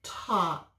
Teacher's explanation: In this word, the AL makes augh. We don't hear the L, we don't say it. It's kind of like a silent letter just helping the A, but we say augh.